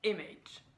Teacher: alors qu'en fait le stress est sur le I. On prononce image et non image.